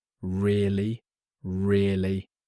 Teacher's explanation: When someone tells you something interesting, you can say really with a rising tone. · you can say really with a rising tone. It shows surprise and interest.